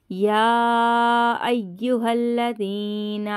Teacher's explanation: मद मुनफसिल हो रहा है, इसको 3 अलिफ की मिकदार पहले हम खींचेंगे, फिर हम तजदीद को ज़ाहिर करेंगे।